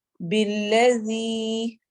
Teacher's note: بالذی، زی نہیں پڑھنا، زی پڑھنا ہے نرمی کے ساتھ کیونکہ ذال نرم حروف میں سے ہے. ذال اور زا میں فرق ہی یہ ہے کہ زا نرمی سے ادا ہوتا ہے اور زا سختی سے سیٹی والے حرف.